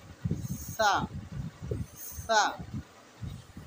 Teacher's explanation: সা উচ্চারণের সহজ পদ্ধতি হলো জিভের আগাটা হালকা দাঁতের উপরের সামনের দাঁতের আগা থেকে একটু বাইরে বার করব, জিভের আগাটাকে বার করে আমরা হালকা করে একটা হাওয়া ছাড়বো, খুব প্রেশার না হয়। সা, সা, ওটাকে একটু টান দিয়ে পড়তে হবে।